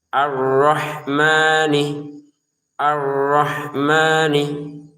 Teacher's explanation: Arrahman jangan sampai ada pantulan.